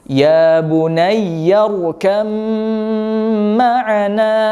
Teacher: makhraj yang terakhir di idgham mutajanisain ini adalah makhraj 2 bibir